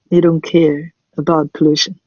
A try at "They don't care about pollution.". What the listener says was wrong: Very good. Yeah, they don't care about pollution.